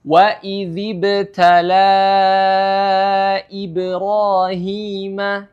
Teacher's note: madnya atau panjangnya adalah 4 sampai 5 harakat ya jadi wajib 4 sampai 5 harakat tidak boleh kurang dari itu ataupun lebih dari itu jadi contohnyaembacanya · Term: Mad Jaiz munfasil